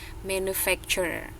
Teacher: Jadi yang T-nya itu, turenya itu dibacanya jadi ceh, ada ceh-cehnya.